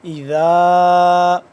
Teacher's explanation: ذا 2 سے 3 الف کے برابر اس کو ہم لمبا کریں گے ، اور ذال کو نرمی سے پڑھیں گے، زبان کی نوک